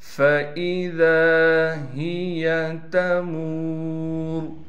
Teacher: فَإِذَا هِيَ تَمُورُ فا کے بعد لکھی ہوئی تو الف ہے، لیکن الف کے نیچے زیر آنے کی وجہ سے الف حمزہ بن گیا۔ ذال کے بعد الف ہونے کی وجہ سے ذال کو ایک الف کی مقدار کھینچیں گے، ہا کو صاف کر کے پڑھنا ہے، یا کو بالکل نہیں کھینچنا، تا کو نرم کر کے پڑھیں گے، میم کے بعد واو ہونے کی وجہ سے میم کو ایک الف کی مقدار کھینچیں گے۔